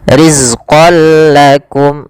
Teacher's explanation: tanwinnya masukkan langsung kepada huruf lam dan tidak ditahan. Maka bila gunnah artinya tidak ditahan. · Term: idgham bila gunnah